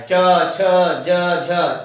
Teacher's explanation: च में जीभ जो है वो दांतों से ऊपर लगती है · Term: चवर्ग